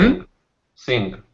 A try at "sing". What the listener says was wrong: You're missing one sound. What's that sound at the very end? So yeah, so that sound at the end there is the Z, and it's the same as in English.